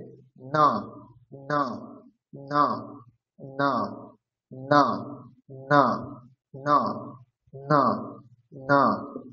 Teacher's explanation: এরপরে হচ্ছে আমাদের ত বর্গ, ত বর্গের উচ্চারণ স্থান হচ্ছে দন্তে, তাহলে দাঁতে উচ্চারণ হবে, দাঁতে উচ্চারণ তার সাথে পঞ্চম বর্ণ যদি আমরা উচ্চারণ করি তাহলে নাকে উচ্চারণ করতে হবে, তাহলে দাঁতে জিহ্বা স্পর্শ করবে আর শব্দ নাক থেকে আসবে